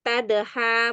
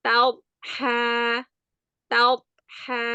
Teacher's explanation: pengucapan huruf dhad yang sukun seringnya memantul. Ini enggak boleh karena huruf dhad bukan huruf qalqalah.